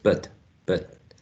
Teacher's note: many speakers use but with a schwa